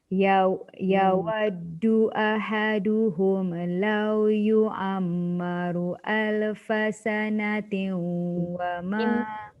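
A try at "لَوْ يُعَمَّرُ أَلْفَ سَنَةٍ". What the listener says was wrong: Ain punya mim tak dengung. Lepas tu lam yang mati tu jangan hidupkan. mim sabdu mesti wajib 2 harakat dengung.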